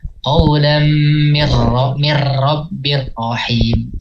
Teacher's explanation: Takhirnya cukup 1-2 kali getaran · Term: digetarkan